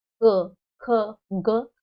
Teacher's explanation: ਜਿਵ ਕਦੇ ਕੋਮਲ ਤਾਲੂ ਨੂੰ ਛੂੰਹਦੀ ਹੈ